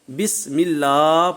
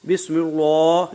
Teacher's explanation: تو یہیں لکھا ہوا ہے، اشارہ کیا ہوا ہے کہ جو اس میں جلالت اللہ کا لام ہے یہ دونوں مرتبہ جو ہے باریک پڑھا جائے گا